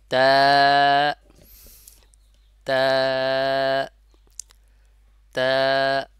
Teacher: তা, বা আর তা বলার সময় মানে তা, তা উচ্চারণের সময় একটু চওড়া হয়ে যাবে ঠোঁটটা। তা, আর জিহ্বার আগাটা উপরের দুই দাঁতের গোড়ার সঙ্গে লাগবে এবং এক আলিফ পরিমাণ টানতে হবে। অবশ্যই এক আলিফ পরিমাণ টানতে হবে, টানলে আপনি তার যে সঠিক উচ্চারণটা পাবেন।